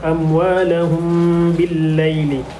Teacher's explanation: mim mati berjumpa dengan huruf ba, merupakan hukum ikhfa syafawi dan perlu dibaca dengan dengung 2 harakat